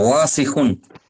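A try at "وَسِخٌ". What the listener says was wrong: অসিখুন, ও টান হয়ে যাচ্ছে, টান হবে না, অসিখুন। জি, অসিখুন।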